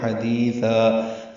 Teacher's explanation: ہا وسط حلق سے ادا کریں گے